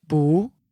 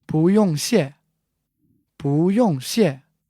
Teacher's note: Normally, 不 is fourth tone, but here it is followed by another fourth tone, 用, so it becomes second tone, the rising tone.